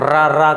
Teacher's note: जब हम र बोलते हैं तो र करते हैं तो इसमें कंपन होता है · क्या कहेंगे, चाहे लुंठित कहा जाए या प्रकंपित। लुंठित कहते हैं जब रा बोलते हैं तो जीभ हमारे मुड़कर किसको, मूर्धा को स्पर्श करती है।